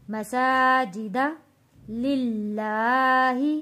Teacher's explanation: اللہ کا لام ہم نے پتلا پڑھنا ہے، یعنی کہ باریک پڑھنا ہے اس کو ہم نے، کیونکہ اللہ کے لام سے پہلے زیر آ رہا ہے۔